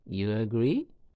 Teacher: make you agree a question a yes no question once again you say it again with a rising intonation at the end of it